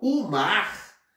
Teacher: Então, por exemplo, quando eu falo o mar, então o é monossílabo átono, porque ele é pronunciado com menos intensidade